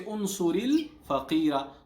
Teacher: there was sukun on ra, but we give it kasra for joining only